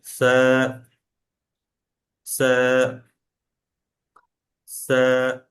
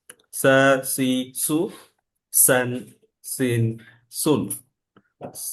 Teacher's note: হালকা একটা নরম একটা আওয়াজ হবে, এবং টানটাও কম টান হবে।